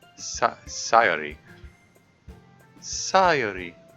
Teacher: it's uh like sayary is still a sort of anglicized pronunciation it's not really an i in there it's more of an ah sound that then that then goes to the yo sound sayori sayori